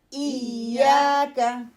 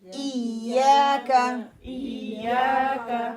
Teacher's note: middle टोंग जो है ऊपर हार्ड पैलेट की तरफ उठेगी, लगेगी नहीं